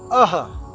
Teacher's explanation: It produces the sound of Mahaprana, sound of H. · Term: Visarg